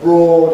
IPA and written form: brɔːd (broad)